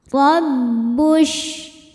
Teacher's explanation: Huruf ra dibaca secara tafkhim karena ra berharokat di atas yaitu harokat fathah. Cara membaca ra ini adalah ditebalkan dengan cara mengangkat pangkal lidah kita.